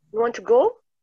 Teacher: boleh menggunakan kalimat biasa tapi jadi naik, intonasinya naik, itu jadi question.